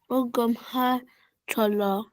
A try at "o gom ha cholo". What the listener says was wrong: Ici, là, on entend un peu A, mais c'est pas le A, c'est le E.